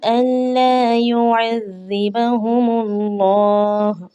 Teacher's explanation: اللہ کا نام یہاں پر موٹا پڑھا جائے گا